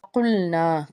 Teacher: قاف حروف مستعلیہ کا حرف پر پڑھیں گے، الف سے پیچھے زبر ہے، ایک الف کے برابر یا 2 حرکات کے برابر کھینچ کے ادا کریں گے۔